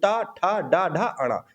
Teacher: जिसका उच्चारण हमारे मूर्धा यानी कि तालू के ऊपर वाले भाग से होता है, वो होते हैं मूर्धन्य